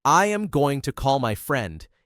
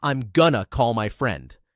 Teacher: Instead of saying, I am going to call my friend, native speakers usually say, I'm gonna call my friend. The word to gets shortened, and it flows much faster.